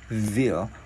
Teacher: mình đưa lưỡi qua giữa hai răng